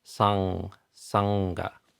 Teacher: So like if you're creating a stop in the back of the mouth, like a hard a G or a K, then the might be created by the back of the tongue pressing up against the mouth, and the air comes out the nose to create this vibratory sound. So, and this is as in sangha. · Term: NG sound